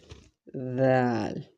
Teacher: the edge of the tip of the tongue touches edges of the upper front incisors, the front two teeth · This letter is pronounced softly with light contact between the tongue tip and the upper front teeth